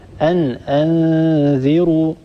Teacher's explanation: فقط انتبهي لكلمة أن أنذروا، الراء هنا مضمومة، الراء مفخمة، لا نترك هذه الراء المضمومة تتأثر بجارتها الذال المكسورة، لا نترك الذال المكسورة تسحب صوت الراء إلى أسفل، نقول أن أنذروا ولا نقول أن أنذروا، ننتبه لا نرقق هذه الراء.